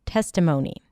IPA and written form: ˈtestəmoʊni (Testimony)